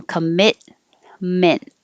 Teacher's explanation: we don't pronounce the t's we don't release the t's just hold them